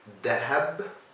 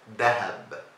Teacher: in Egypt, we don't really pronounce the difficult stuff that requires your tongue between your teeth, like the th and th and all those difficult things. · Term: replace them